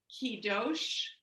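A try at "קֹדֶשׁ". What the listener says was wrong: The dot. So there's a dot. Kodesh. So the line under the kuf is just a pronunciation mark. It's not a vowel. vowel is that dot in the upper left.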